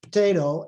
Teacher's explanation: if this very reduced schwa occurs before or after a voiceless stop it can even become voiceless and virtually disappear